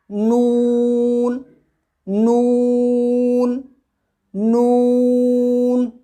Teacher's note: زبان کی نوک کو سامنے والے اوپر کے دانتوں کے مسوڑھوں سے لگا کر باریک آواز میں اور ہونٹوں کو گول کرتے ہوئے کہیں گے نون نون نون۔